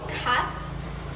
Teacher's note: the back of the tongue touches the soft palet